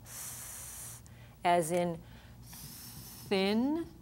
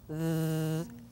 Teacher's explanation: We can have th, as in thin, unvoiced, or th, as in the voiced sound.